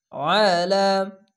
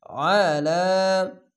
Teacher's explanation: আলা, খার জবর এক আলিফ টেনে পড়বেন, আইনটিকে মোটা করে গলা চিপে পড়বেন। আইন জবর আয়, লাম খাড়ে লা, আলা।